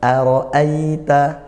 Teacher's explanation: Hamzah a ro roai ya di situ ada dua Hamzah maka dua Hamzah ini harus kita kuatkan diperjelas gitu ya sifat hurufnya syidah dikuatkan